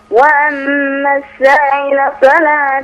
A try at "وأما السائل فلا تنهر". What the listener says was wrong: مد شوية برضو هنا عشان هنا مد واجب.